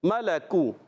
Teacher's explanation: کاف کو باریک رکھنا ہے، کاف کا مخرج زبان کی جڑ اور تالو کا سخت حصہ